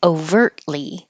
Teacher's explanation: You won't hear the T because your tongue goes to the T position, overtly, and you hold it there and make the L without moving it